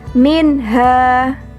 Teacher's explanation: Kotak berwarna ungu tua menunjukkan ilmu tajwid izhar halki, yakni jika terdapat nun sukun atau tanwin bertemu dengan huruf-huruf izhar halki, alif atau hamzah, ain, ghin, ha, kho, dan ha. Cara membacanya harus jelas atau terang dan tidak boleh berdengung.